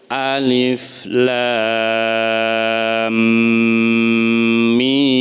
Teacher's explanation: Jadi bukan alif lam mim, bukan gitu, tapi alif lam mim. Nah, lam dan mimnya panjangnya sama, gitu ya. Nah, sekitar 4 sampai dengan maksimum 6 harakat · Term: tasjid mim